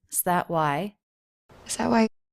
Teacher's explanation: That, with a stop T.